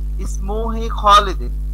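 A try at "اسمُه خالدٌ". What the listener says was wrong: এখানে হি কেন হবে ভাই? যদি কোনো এই আ উল্টা পেশ হুয়ের মধ্যে ইসমুহু বলুন সবাই।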